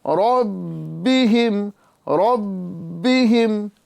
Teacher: لہذا یہاں پر تھوڑا خیال رکھیں اور اس طرح پڑھیں، تنزل الملائکۃ والروح فیہا بِإِذْنِ ربہم فیہا بِإِذْنِ ربہم بِإِذْنِ ربہم، را کو پر کریں گے، با میں قلقلہ خوب جماؤ کے ساتھ ادا کریں گے، کیونکہ با حروف قلقلہ ہونے کے ساتھ ساتھ مشدد ہو رہا ہے، لہذا اس کا قلقلہ خوب ظاہر ہوگا۔